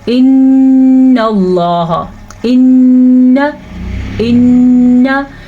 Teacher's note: जो आवाज़ नाक में जाके गूंज रही है इसी को गुन्ना कहते हैं।